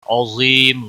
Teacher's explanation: عظیم ظا حروف مستعلیہ میں سے پر پڑھا جائے گا، یا مدہ ہے ایک الف کے برابر کھینچ کر پڑھیں گے. وقف کی صورت میں میم ساکن پڑھا جائے گا، وقف بالاسکان ہوگا.